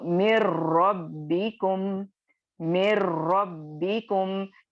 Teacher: ٹھیک ہے, اسی میں اگر آپ نیکسٹ کنیکٹنگ اگر آپ دیکھیں تو مر ربکم, مر ربکم یعنی نون ساکن کے بعد رو آ رہی ہے, تو نون ساکن کی آواز کو ٹوٹلی ہم رو میں مرج کر دیں گے. یہ بھی آپ کو کامل غنہ یعنی کامل ادغام ہو رہا ہے لیکن بغیر غننے کے.